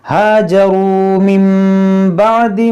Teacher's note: ثُمَّ إِنَّ رَبَّكَ لِلَّذِينَ هَاجَرُوا مِن بَعْدِ مَا فُتِنُوا यहाँ पर देखें नून साकिन के बाद हरफ बा है, तो यहाँ पर भी इक़लाब होगा।